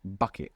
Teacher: And you will see that paper move with that burst of air that comes with bucket. That hard B in English is a plosive sound. It means you gather up a little bit of air and you shoot it out when you make that B. Where this B doesn't have that.